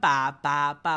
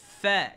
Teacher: Bukan pa bunyi dia. Sebab dalam bunyi al-Quran tidak ada dibunyikan pa tetapi sebaliknya dia dibaca dengan bunyi fa